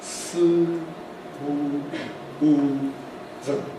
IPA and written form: sɯ mɯ ɯ zɯ (スムーズ)